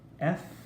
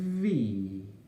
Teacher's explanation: But for the V sound, you feel a little bit of vibration, don't you? So the F is called non-voiced because there is no distinct sound or vibration on the lip. The V is voiced because you do feel the vibration. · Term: voiced and non-voiced